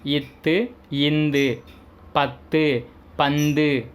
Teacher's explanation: நாவின் நுனி மேல் வாய் பல்லின் அடி